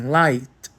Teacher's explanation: Ele esticou a vogal que vinha antes dele. É por isso que o I em light tem esse som longo e aberto de I.